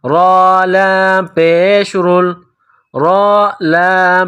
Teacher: را کے اوپر پیش ہے، را کو موٹا پڑھیں گے